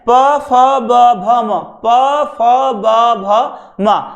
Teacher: ना जीभ का प्रयोग हो रहा है, ना दांतों का प्रयोग हो रहा है, बल्कि ओष्ठ का प्रयोग हो रहा है। जो आपके ये मान लीजिएगा स्वतंत्रिका से धमनियां निकल रही हैं, वो आपके होठों के द्वारा ही उसका निर्माण हो रहा है, तो इसे हम कहते हैं ओष्ठीय कहते हैं, ओष्ठीय।